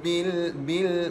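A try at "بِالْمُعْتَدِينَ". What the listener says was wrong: bukan bil bil mu' huruf ain, tempat parkirnya di pertengahan kerengkung adik-beradik dengan huruf ha ain dan ha adik-beradik. Bil mu'tadin, bil mu'tadin, bil mu'tadin, bil mu'tadin. Jangan baca bil mu' sekali lagi nah. Inna rabbaka huwa a'lamu bil mu'tadin.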